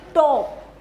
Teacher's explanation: जैसे कि हम बोलते हैं अभी टॉप, जैसे इस साउंड को हमने प्रोड्यूस करना है तो हमारी जो टंग है, जो टिप ऑफ द टंग है, वो जाकर क्या करता है, हमारे जो टीथ रिज है, अपर टीथ रिज जो है उसको जाकर टच करता है। जब वो टच करता है तो उसके साथ वेरियस साउंड जो है वो प्रोड्यूस होती है।